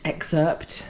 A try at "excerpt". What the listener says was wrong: Ah, you don't pronounce the P in excerpt.